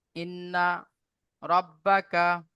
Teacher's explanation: নুনের উপরে তাজিদ আছে নুন মুসাদ্দাদ গুন্না ওয়াজিব এক আলিফ পরিমাণ গুন্না করব